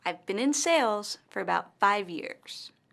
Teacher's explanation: longer and louder i've been in sales for about five years in this sentence the word sales and five years are stressed